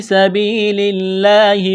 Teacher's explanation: الف کے برابر کھینچیں گے، حروف مدہ یا کی وجہ سے، سین میں سیٹی کی آواز پیدا کریں گے، سین کو باریک کرنا ہے